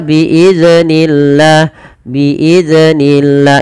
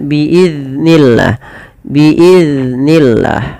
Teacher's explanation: Pada lafal biiznillah jangan dibaca dengan memantulkan huruf zal. Kesalahan yang sering terjadi di dalam membaca huruf zal adalah memantulkan huruf zal tersebut.